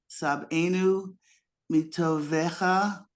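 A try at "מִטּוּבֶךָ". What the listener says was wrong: Not, look at this. Not toe.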